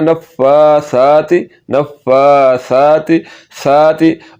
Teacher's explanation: سا کو پڑھتے ہوئے سیٹی کی آواز نہیں نکلنے دینی